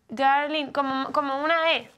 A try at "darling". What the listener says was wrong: Sí, abre la boca un poco más. Estás un poco cerrada. Darling.